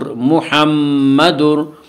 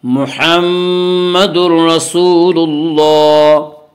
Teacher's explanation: تنوین کے بعد را رہا ہے اس لیے بغیر غنہ کے ملا کر پڑھیں گے۔ اس کے ادغام بلا غنہ یا ادغام تام کہتے ہیں۔